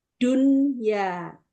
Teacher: Di kata ad-dunya, nah ini disebut idhar wajib atau idhar mutlak. Jadi ini tidak dengung Ibu, kan nun sukun ketemu ya, tetapi dia dibaca idhar jelas